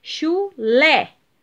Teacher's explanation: o lê é a sílaba tônica